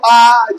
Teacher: क्या क्या आ जाएगा आ आ अच्छा बोल के देखो आ जीभ आगे वाला पार्ट जीभ का नहीं कुछ कर रहा होगा पीछे वाले में थोड़ा जोर पड़ रहा होगा आ फिर इसके बाद उ वो देखो पीछे वाले जी बोल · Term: पश्च स्वर